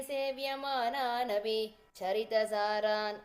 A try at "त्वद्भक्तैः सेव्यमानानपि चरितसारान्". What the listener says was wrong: The Sevyamanaanapi, there's no pause there. So just kind of go Sevyamanaanapi Charita Charan. And only after Charita Charan.